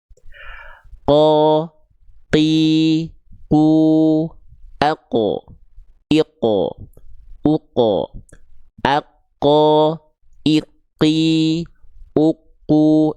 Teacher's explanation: Seluruh pangkal lidahnya nempel ke langit-langit yang paling dalam. Ya, nempel ke langit-langit yang paling dalam alias langit-langit yang teksturnya adalah lu lunak. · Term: huruf qof